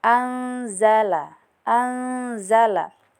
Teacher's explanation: Kemudian ee pada ayat keet7 di sini terdapat hukum ikhfa hakiki. Karena nun sukun bertemu dengan salah satu huruf ikhfa yaitu za. Jadi baca samar dengan dengung